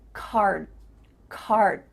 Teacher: D sound but your mouth is making that shape card card my tongue is flat against the roof of my mouth to make the D but it's not coming out · shape of that Desalle but it's not making the vibrations happening you're not actually making a D sound but your mouth is making that shape